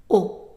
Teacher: Au in French is pronounced as an open o